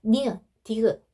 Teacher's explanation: 이 잇몸 소리는요, 여러분 혀끝이요, 잇몸에 닿아서 나오는 소리거든요.